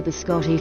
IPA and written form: bɪˈskɒti (Biscotti)